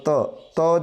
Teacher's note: ત જ્યારે તમે બોલશો ત્યારે તમારા જે દાંત છે બને ઉપર અને નીચેને ભેગા થશે, તો જે ત છે એ દંત્ય ધ્વનિ તરીકે ઓળખાય છે.